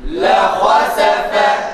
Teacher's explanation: Ha kalın, sin ile fa harfleri ise ince. Buna göre ha ile sin ve fa'nın harflerinin ses tonlarının mutlak surette farklı olması gerekir.